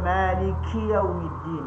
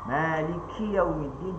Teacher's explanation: Kesalahan yang kita baca menyebabkan bunyi angin ni kerana kita tolak lidah ke depan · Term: Angin kuat pada huruf kaf